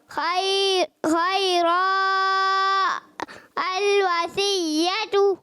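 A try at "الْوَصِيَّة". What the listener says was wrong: اچھا صاد کو موٹا کرنا الوصیۃ. اچھا صاد کو جو ہے نا آپ سا کے مخرج سے پڑھ دیتے ہو، اب تھوڑا سا محنت کرو.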